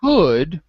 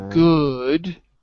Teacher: the k for C is voiceless and the g for G is voiced